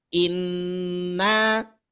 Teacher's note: ditahannya itu adalah 2 ketukan, 2 harokat atau setara dengan 3 kali ketukan hitungan lamban. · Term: gunnah